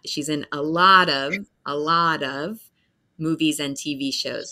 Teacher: So that's my accent where the T will become a D sound.